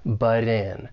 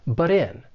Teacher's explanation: Something I want to say about the pronunciation of this phrase, and this is more related to the American accent because I am from the US, and that is that T sound in but, that double consonant T. Because it comes between two vowel sounds, I am going to say this as a flap T, and it's going to sound more like a soft D, but in. And then we can link that flap T with the vowel sound in, but in.